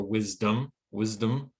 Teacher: most native speakers are going to stress the first syllable · that dom might take on a schwa sound and we might get more of a wisdom wisdom so it